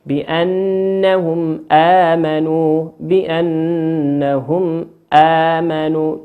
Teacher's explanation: تنطق كما هي، بأنهم آمنوا، من غير إقلاب، من غير إدغام، من غير إخفاء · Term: الإظهار الشفوي